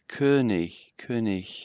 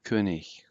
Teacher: the G is a little bit gutturalized slightly